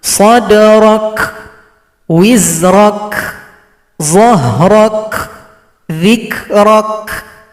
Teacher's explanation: Ketika mensukunkan huruf kaf, maka berikan juga sifat hamas.